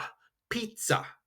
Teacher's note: This is a hard attack on the Z. It's not that soft